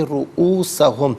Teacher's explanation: را پر پیش ہے، را کو پر کر کے پڑھیں گے